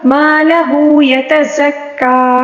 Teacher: زا کو سختی سے پڑھنا ہوگا اور سیٹی کے ساتھ بھی پڑھنا ہوگا